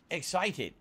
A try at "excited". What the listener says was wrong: Excited. Again, we get to the overpronouncing the T's. That's a very new DSB thing. He can't just say excited. he has to be excited.